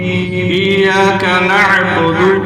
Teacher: عین کو حلق سے درمیان حلق سے. ہا اور عین کا ایک ہی مخرج ہے. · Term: وسط حلق